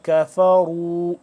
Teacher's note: کاف کو باریک اور را کو موٹا